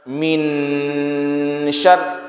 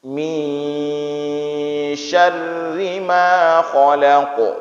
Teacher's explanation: Posisi lidah, letakkan lidah antara nun dengan shin, walaupun lebih dekat ke huruf shin. · Kita bukan sedang membaca min nun dan bukan sedang membaca shin, tapi di tengah-tengah. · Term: ikhfa